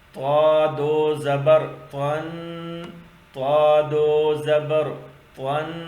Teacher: تو کو موٹا پڑھے، اس کو تا ادا نہ کرے، اس کو تو ادا کرے. زبان کا سرا سامنے والے سر اوپر کے جو دو دانت ہیں، ان دانوں کے جو جڑ، دانتوں کی جو جڑ ہے، جڑ کے ساتھ ملا کے پڑھ لے.